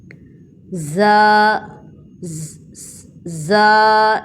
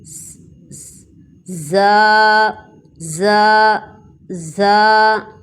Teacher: اس میں آپ دیکھیں سیٹی کی آواز آ رہی ہے